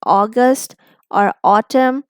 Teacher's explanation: while saying the aw sound as in August or autumn, our mouth doesn't change its position.